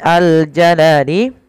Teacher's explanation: alif lam di sini alif lam qamariyah dibaca dengan jelas suara lamnya